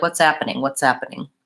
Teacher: changed in order to add fluency to the speech is that the initial H will sometimes drop out